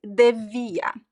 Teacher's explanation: So we use devia because it's easier to pronounce. You don't have the r sound, right? It's shorter. So a lot of people in informal language, colloquial language, say devia instead of deveria. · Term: informal version